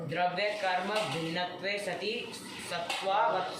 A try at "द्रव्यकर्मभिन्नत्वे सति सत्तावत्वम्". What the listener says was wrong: सत्वा कहाँ? तुम इसके पीछे लग रहे हो। बोलो ना, द्रव्य गुण भिन्नत्वे सति सत्तावत्वम।